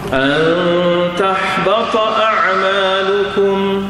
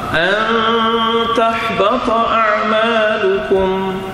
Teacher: Nun mati berjumpa dengan ta ya, ada dengungnya, ada ikhfa.